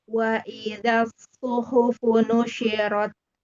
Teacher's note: Bukan pakai shu, pakai shin yang titik 3, bukan. Bukan tengah lidah. Tapi yang su, pakai ujung lidah.